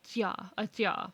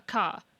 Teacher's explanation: a tya is further forward in the mouth versus a ka. Where your tongue is positioned is different.